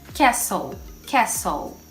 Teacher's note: É como se a gente juntasse o S no L e a gente não vai falar a letra T. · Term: silent T